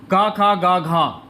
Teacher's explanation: घ का उच्चारण स्थान होता है कंठ